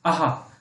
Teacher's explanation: आपका जो आहा है, आप इसको बोल के देखिए, आहा, आपके कंठ से ही डायरेक्ट आवाज निकल रही है